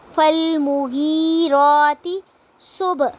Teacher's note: فالمغیراتی پہ یا ساکن سے پہلے زیر آ رہی ہے تو یہاں پہ یائے مدہ ہوگی تو اس کو ہم ایک الف کے برابر لمبا کریں گے